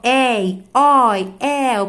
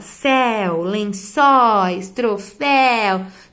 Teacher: Todas as vezes que vocês virem ei, oi, el, esses ditongos aí com som aberto, é porque a gente abre a boca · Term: ditongo aberto